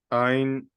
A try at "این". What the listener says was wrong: No, not ein, in, just in.